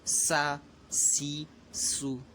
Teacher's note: سین یہ سیٹی والا حرف ہے، تو جب اس کو ادا کریں گے تو سیٹی کی طرح آواز نکالیں گے